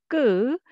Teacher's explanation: without air but much stronger, pressed-down, condensed sound ㄲ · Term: tense sound